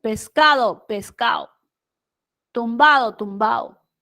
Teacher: En el costeño, por ejemplo, se elide la D. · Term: la elisión